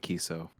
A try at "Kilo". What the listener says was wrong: The L is pronounced. It's kilo.